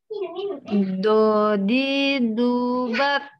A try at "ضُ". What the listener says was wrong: Nyasar ke huruf dal.